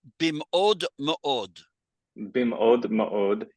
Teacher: we want to have that glottal stop in there